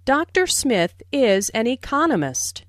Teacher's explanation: notice the stress on Economist this content word has new information so it is emphasized there are four syllables in Economist